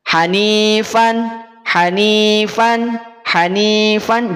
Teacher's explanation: ada bunyi Nun sukunnya ada bunyi vokal a-nya sehingga akan terdengar an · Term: izhar